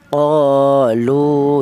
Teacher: Qolu ya satu alif atau dua harakat atau dua ketukan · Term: mad thobi'i